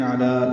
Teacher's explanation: علی لام کو 2 حرکات لمبا کریں گے